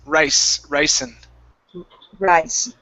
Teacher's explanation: give me an unvoiced s